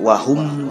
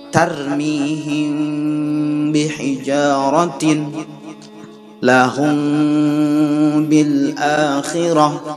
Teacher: ketika kita membaca mim sukunnya kita tekan, namun bibir kita tidak boleh nempel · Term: ikhfa syafawi